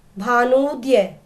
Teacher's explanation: ऊ और ऊ दोनों छोटे ऊ मिलकर बन गए बड़ा ऊ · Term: दीर्घ ऊ